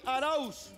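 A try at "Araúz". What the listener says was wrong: Arauz. Con acento de la U. Y con Z.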